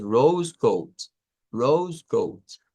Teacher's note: Rose Goat que en este caso es el sonido ou ou que en realidad es una mezcla de la O y la u corta Entonces se une la o a la u corta y decimos